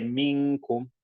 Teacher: It sounds like you're making a ghunna and you're trying to merge the next one. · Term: ikhfa